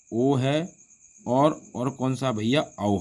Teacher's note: इनका उच्चारण स्थान कंठ ओट होता है